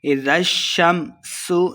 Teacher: اذا الشمس کورت، اذا زال پہ نرمی سے پڑھیں گے، شین مشددہ، زال کو شین کے ساتھ ملا کے پڑھنا ہے۔ اذا الشمس، سین پہ سیٹی کی آواز آئے گی۔ کورت، واؤ مشدد ہے، کاف کو واؤ کے ساتھ ملا کے پڑھیں گے، اور واؤ پہ اپنے ہونٹ گول کرنے ہیں، اور آخر پہ ہم نے وقف کر دینا ہے۔